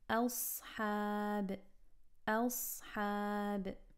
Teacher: A light hamza followed by a heavy sad, followed by a light ha and alif.